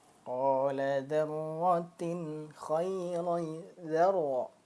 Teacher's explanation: Ra-nya berharokat fathah, maka dia tebal ya. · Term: Tafkhim